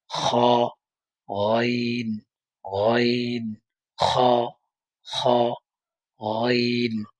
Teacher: কণ্ঠনালীর শেষ ভাগ হইতে উচ্চারিত হয়